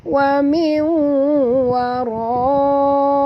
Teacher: Wara tebal ra tafkhim ya. Ra bari atas kena baca tebal, dengan baca waraihi, bukan wara tapi waro ro ya.